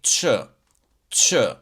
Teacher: when I pronounce the C with the tail, I say ch, ch. So the sound is somewhere here in between my teeth.